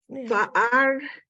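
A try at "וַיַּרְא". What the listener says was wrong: Vayar. Don't forget the yud.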